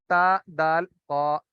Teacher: زبان کی نوک اوپر والے دونوں دانتوں کی جڑ سے جب ہم لگائیں گے تو تا دال قا یہ تینوں حروف ادا ہوں گے. ان تینوں حروف کو نقائیہ کہتے ہیں.